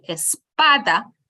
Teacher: the stress on the PA which is the second to last syllable